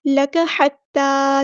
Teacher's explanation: تا پہ کھڑا زبر ہے تو مد اصلی کریں گے